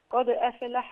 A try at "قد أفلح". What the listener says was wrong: خلي بالك الفاء، الفاء ساكنة مش مقلقلة. خلي بالك الدال مقلقلة. قد أفلح من تزكى. الدال هي المقلقلة. أيوة الدال. أيوة الدال هي المقلقلة. قد أفلح. أفلح.